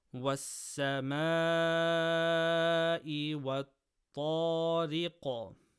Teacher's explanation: Stretch letter before hamza in the same word, mad muttaṣil, 4 harakas.